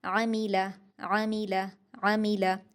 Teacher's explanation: आइन को आप हलक से अदा करेंगे। मीम और लाम बारीक है और आइन भी बारीक है। तीनों पर हरकत है।